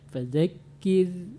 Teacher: Namun ada yang perlu diperbaiki bacaannya, di antaranya ro tipis, ro mati sebelumnya baris bawah, huruf sebelum ro itu baris bawah maka tipis. Fadzakir jangan terlalu banyak getaran. Fadzakir tidak boleh ada R-nya, tipis dia.